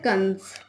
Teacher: अनुस्वार, इसके उच्चारण में हवा केवल नाक से निकलती है